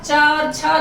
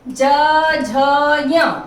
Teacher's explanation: च और छ दोनों वर्ण अघोष होंगे, बाकी तीनों ज, झ, ञ ये घोष होंगे। च अल्प प्राण होगा, छ महाप्राण होगा, ज अल्प प्राण होगा, झ महाप्राण होगा और ञ अल्प प्राण होगा।